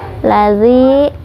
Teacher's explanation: zi dibaca panjang 2 harokat karena mad tabi'i